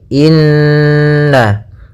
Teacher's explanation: pada bacaan innahum di sini ada hukum bacaan ghunah yaitu adanya Nun berharakat tasydid ya maka cara membacanya adalah kita tahan dulu ghunahnya